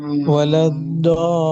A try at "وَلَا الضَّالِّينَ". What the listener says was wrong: یہ غلط ہے ابھی جو پڑھا ہے، یہ آگے بھی لگا دیا ہے، ہاں ذرا ذرا تھوڑی سی مشقت کرو، مشقت تھوڑی سی، یعنی اس میں تھوڑا محنت کرنی پڑتی ہے تھوڑی سی، زبان کو اٹھانا پھر کتنا بڑی مشقت ہے، ہاں جی،